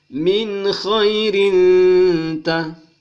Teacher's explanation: Vokal ganda bertemu dengan ta, sehingga berbunyi mendengung selama dua alif atau dua ketukan. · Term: ikhfa